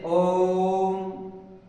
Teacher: इनका उच्चारण करते समय बहुत ज्यादा समय लगता है यानी तीन मात्राओं का समय लगता है किसी को दूर से बुलाने के लिए या पुकारने के लिए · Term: त्रि मात्रिक स्वर